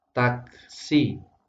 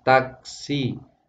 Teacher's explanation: tidak boleh take, dibaca taksi, tapi harus ada alirannya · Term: kaf berharokat sukun